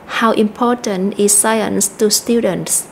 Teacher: chúng ta nhấn mạnh từ how how ở đây là question Words đó là từ để hỏi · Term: stress